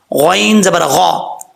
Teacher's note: غین کو پر پڑھیں گے، حروف مستعلیہ میں سے ہے